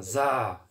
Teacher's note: 그래서 요거 점이 없으면 사인데 이 점을 찍게 되니까 Z 발음이 되니까 사가 아니라 자가 됩니다. 자 이렇게 목이 살짝 좀 진동을 일으키면서 발음이 됩니다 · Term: 유성음